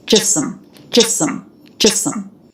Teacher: there's not two S sounds here. Just think of one S sound to link. · even though the word just is stressed, the T is dropped.